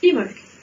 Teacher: Tout simplement parce que là aussi c'est gaélique et qu'en gaélique, le B, je l'oublie et on va prononcer imolk